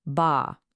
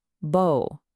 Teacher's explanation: it's the difference between a wide A and a round O.